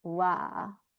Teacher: So it's not so hard, and it's not so soft, w, but in between, and you could just do wa, like a little bit of support of the bottom lip, kind of softening the v sound